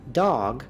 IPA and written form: dɔɡ (Dog)